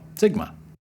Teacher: in ancient and modern Greek, sigma makes an unvoiced S sound